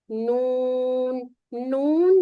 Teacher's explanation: نون اور میم ان میں ایک فطری غنہ موجود ہے، یعنی کہ نوز میں یہ آ ہی جاتے ہیں